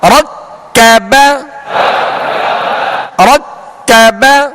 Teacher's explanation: را کو پر کریں گے، کاف کو باریک.